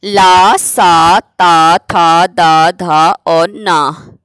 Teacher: तो इनका उच्चारण स्थान दंत है। तो दंत का होने के कारण इसका जो वर्ग का नाम हो जाएगा वो दंत है।